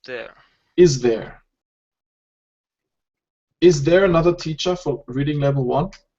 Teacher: you say the Z sound as well as the voiced th sound